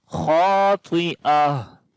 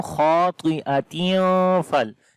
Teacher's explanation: This ta marbuta becomes ha with sukun sign on it. This double kasra we skip, and this ta we convert into ha.